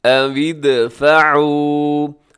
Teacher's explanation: یہاں دال ہوگا قلقلہ کیونکہ دال ساکن ہے، تو دال حروف قلقلہ میں ہے، قلقلہ کے 5 حروف ہیں، قاف تو با جیم دال، اس میں دال بھی شامل ہے۔